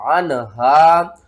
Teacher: عین نون زبر عن، ہا الف زبر ہا، عن ہا، یہاں پر آپ نے کیا کرنا ہے، نون کے اوپر آپ نے غنہ نہیں کرنا، ان ہا نہیں پڑھنا۔ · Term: اظہار